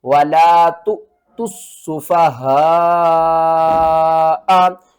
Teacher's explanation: یہاں پر ہم نے تا کو سین سے ملانا ہے، سین کو 2 بار پڑھنا ہے اور سین کے اوپر سختی کرنی ہے